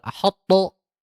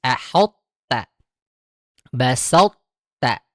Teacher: to-nya harus ditebalkan terlebih dahulu, baru kemudian masuk ke ta-nya tipis. Jadi tidak dua-duanya tebal.